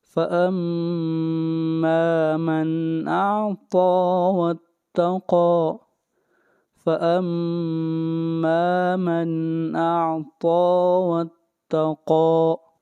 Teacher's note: قاف حروف مستعلیہ میں سے ہے، موٹا پڑھا جائے گا